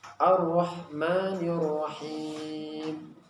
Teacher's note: huruf ra itu juga punya sifat takrir, yaitu ada getaran. Nah, getarannya ini ada batasnya, yaitu tidak lebih dari 2.